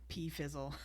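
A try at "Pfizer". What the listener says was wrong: Pea is silent.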